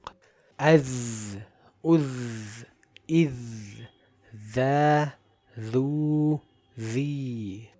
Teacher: The letter Dal has Jahr and Rakhawah, so even though the breath does not flow, the sound continues to flow easily while it is always recited with Tarqiq.